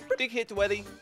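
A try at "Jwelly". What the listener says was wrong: Dwelly? Did you just call it Dwelly? The letter J is not so difficult to pronounce, though.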